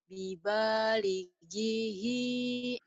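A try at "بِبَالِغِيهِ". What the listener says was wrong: Salah. Penekanannya salah coba. Lagi.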